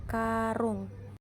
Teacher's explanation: vokal u tinggi bawah belakang bundar